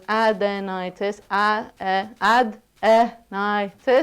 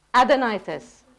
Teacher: So the stress is on the ni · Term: stressed syllable